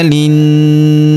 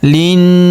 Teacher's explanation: huruf li langsung sambung ke huruf na yang berharokat tasydid, kita tahan dan kita tekan, serta kita dengungkan 2-3 harokat karena terdapat tanda tasydid di atasnya.